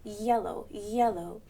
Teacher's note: hand is my tongue so when we say y y yellow the back of the tongue is going up towards the roof of the mouth yellow yellow and the bottom of the tongue or the tip